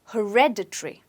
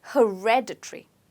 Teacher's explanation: okay when it's supposed to be stressed on red